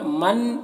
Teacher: نون ساکن کے بعد نون ہے حروف یومن میں سے، تو نون کو نون سے ملا کر مدغم کر کے غنہ کے ساتھ میں پڑھیں گے، اس کو ادغام ناقص کہتے ہیں۔